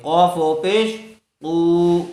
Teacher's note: أنه الحق من ربهم وأما الذين کاف زبر کا فا زبر فا کفا را واو پیش رو کفروا فا زبر فا یا زبر یا فیا قاف واو پیش قو فیقو لام واو پیش لو فیقولو نون زبرنا فیقولون قاف قاف کو پر کیجئے قاف و پیش قو پیش والے حرف کے بعد واو ساکن آیا ہوا ہے اس لیے واو مدہ ہوگا قاف کو تھوڑا کھینچ کر پڑھیں گے.